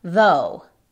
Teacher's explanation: En este caso es con voz y suena exactamente como nuestra D en español. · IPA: /ðoʊ/